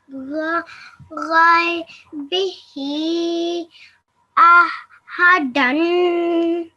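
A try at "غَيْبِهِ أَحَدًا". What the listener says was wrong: And again, just the he for 3 to 5 seconds. Could you read the he again for a bit longer?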